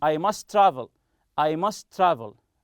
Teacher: this is just one letter must travel as if it is one t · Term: linked